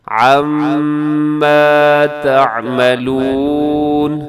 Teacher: میم مشدد پہ غنہ کیجیے گا، آواز کو ناک میں لے جائیے گا. عما تعملون، اس آیت کو پھر سنیے گا.